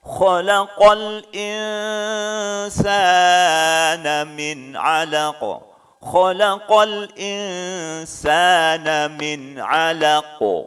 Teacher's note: nunnya kembali disamarkan karena nun mati ketemu huruf sin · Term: ikhfa